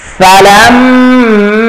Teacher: লামটা হচ্ছে ওয়াজিব গুন্না মাটা হচ্ছে তিন আলিফ টান